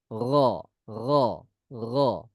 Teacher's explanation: Huruf ro sebagaimana huruf G di bahasa Indonesia, tapi kita getarkan. Ro, ya. Ghairil mardu, bukan dengan qalqalah, magedu, bukan.